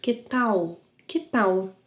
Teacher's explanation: Remember to pronounce the final -L as a W/U sound.